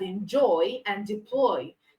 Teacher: They both have the stress on the second syllable.